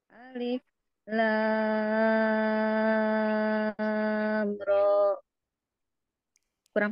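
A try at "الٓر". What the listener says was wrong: Terlalu cepat itu Bu. Dialirkan dulu. Cuman dikit. Lam ro, itu segitu.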